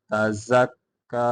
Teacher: زا کو سیٹی کے بعد نکال کے پڑھیں گے